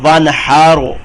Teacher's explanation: یہ را جو ہے را ساکن آ جائے اسے پہلے زبر اس کو بھی موٹا پڑھتے ہیں